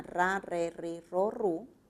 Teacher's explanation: es una vibrante múltiple verdad